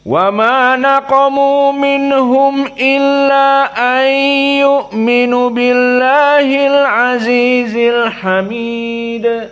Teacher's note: qiraah asusi dua harakat saja alqasr